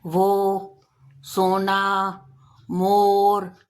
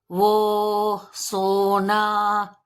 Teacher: इसका उच्चारण करते समय होठ गोलाकार होते हैं और स्वर थोड़ा खिंचाव के साथ कंठ से निकलता है। करके देखिए, वो, सोना, तो आपको पता चलेगा कि होठ जो है वो गोल हो रहे हैं। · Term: ओ की मात्रा